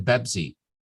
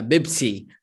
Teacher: in Arabic we don't have the P sound, so they just subconsciously switch to the closest one, which is the voiced B sound